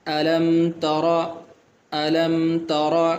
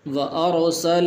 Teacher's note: طرح پڑھنا ہے، الم تر کیف، تو را کے اوپر زبر ہے تو اس کو موٹا کریں گے